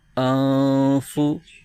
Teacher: نون ساکن کے بعد حرف فا جو کہ حروف اخفا میں سے ہے، تو یہاں بھی اخفا کا قاعدہ ہو رہا ہے، یہاں بھی غنہ کریں گے